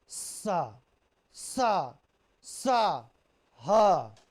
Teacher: जब हम इनका उच्चारण करते हैं तो हमारे मुंह से हवा निकलती है। तेज घर्षण भी होता है। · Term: संघर्षी व्यंजन